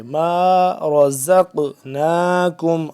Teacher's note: قاف ہو رہا ہے یہاں پہ ساکن، تو ساکن قاف ہو گیا تو یہاں پہ حروف قلقلہ میں سے حرف آ گیا قاف، تو یہاں پہ ہم اس پہ قلقلہ بھی کریں گے.